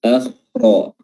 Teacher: huruf ra-nya juga tebal karena berharokat fathah